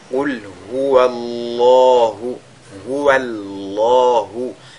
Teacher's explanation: Et donc, on a affaire ici à un cas de at-tafkhim, dont le lam du mot Allah est donc lu avec agrandissement